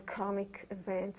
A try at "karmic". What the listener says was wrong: That's karmic, not comic.